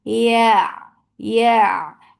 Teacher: makhraj of ya is when you're lifting your tongue up, but you are not touching your palate. You're not touching it.